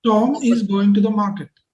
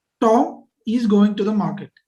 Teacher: read the first sentence and stress on the word Tom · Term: word stress